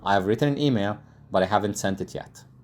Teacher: we have sentence stress on the content words the important ones like written email haven't sent it or sent only and yet